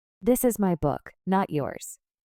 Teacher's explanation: My gets emphasis through higher pitch to contrast with yours.